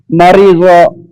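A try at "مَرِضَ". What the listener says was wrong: এটা শেষে কিন্তু দদ আছে, এটা কিন্তু জ না। মারি।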